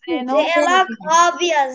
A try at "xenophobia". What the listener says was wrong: Xerox না, Xeno. It is xenophobia.